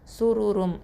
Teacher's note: சுருரும் இந்த இடத்துல சூரு வாயை வந்து குவிச்சே தான் வச்சுருக்கணும்